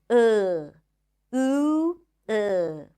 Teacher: just pronouncing the ooh sound without rounding the lips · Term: unrounded ooh